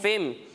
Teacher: यहाँ पर हम फिन नहीं पढ़ेंगे बल्कि फा को मीम से मिलाकर फिम पढ़ेंगे